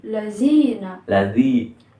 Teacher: cara pelafatan huruf za ini dia itu antara ujung lidah bertemu dengan ujung gigi seri atas